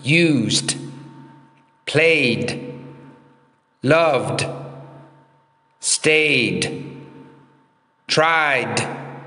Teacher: It's just a very small, quiet D sound. It's not a separate syllable.